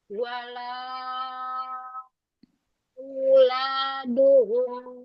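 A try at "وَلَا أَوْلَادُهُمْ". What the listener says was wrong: Wala. Ringankan lagi ke bawah. Wala auladuhum. Jangan naik. La ke bawah. Wala auladuhum.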